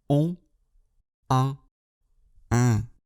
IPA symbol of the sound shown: õ, ɒ̃ ; , æ̃